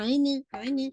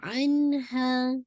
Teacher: इसमें जो है बेसिकली इजहार करेंगे क्योंकि नून साकिन के बाद हा है ना